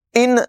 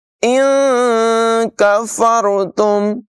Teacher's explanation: یہاں پر نون ساکن میں اخفا کریں گے، یعنی اس کی آواز کو ناک میں چھپا کر ادا کریں گے، ظاہر نہیں کریں گے۔